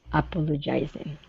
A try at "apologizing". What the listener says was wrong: Okay, now here you're saying apologizing, putting the stress after the G, saying jizing. apologizing.